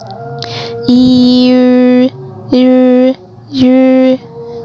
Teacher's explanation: Nah, aku ingatin lagi kalau kalian kesusahan untuk ngucapin kalian bisa coba dari huruf I. Lama-lama mulutnya itu membentuk huruf U, tapi sebenarnya kita itu suaranya ingin mengucapkan huruf I.